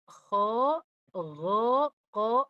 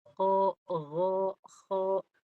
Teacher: Yang tiga ko gho qo hanya istial saja hanya naik aja pangkal lidahnya. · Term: naik pangkal lidahnya